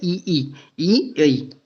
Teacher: जब ई बोलते हैं तो आपकी जो जीभ है वो कहाँ से स्पर्श होती है, तालु से, जीभ के ऊपरी भाग से स्पर्श होती है, ऊपरी।